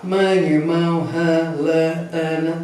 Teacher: para marcar que esse som ele sai pelo nariz, ele é expresso pelo nariz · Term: vogal nasal